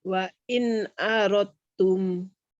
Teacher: wa in aradtum itu dalnya kan hilang itu. Masuk ke ta ya.